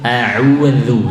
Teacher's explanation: A'udzu sama seperti ta'awud, zu keluar lidah sedikit, zu tidak ditekan. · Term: dzal